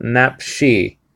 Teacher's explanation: the emphasis is to be on the last syllable